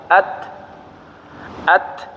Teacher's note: Huruf ta ketika sukun itu disertai dengan bunyi angin yang keluar dari mulut kita, ya. Jadi huruf ta kalau kita baca bukan at tapi at seperti itu, ya.